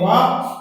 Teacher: वा दंतोष्ठ ऊपर के दांत, निचला ओष्ठ